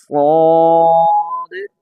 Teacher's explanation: صاد جو ہے موٹا ہے، سین کی نسبت سیٹی کم ہے، یہ دیکھیں سین میں سیٹی ہے بریک ہے، صاد میں سیٹی سین سے کم ہے، صاد موٹا ہے۔ صاد، زبان کی جڑ تالو کی طرف اٹھے گی، صاد موٹا ہو جائے گا